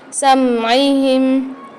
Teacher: میم کے اندر غنّے کی ہمس ہوتی ہے تو یہاں پر ہم سمعہم میں غنّہ کریں گے